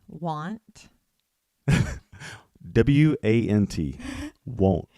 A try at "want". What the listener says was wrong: Sounds like won't. W-O-N-T. The north we say A is want. Want.